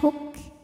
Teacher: Jangan lupa keluarkan bunyi anginnya, hamsnya belakangan ya. Jadi syidahnya ada, suaranya tertahan, huk. Belakangnya ada anginnya, huk.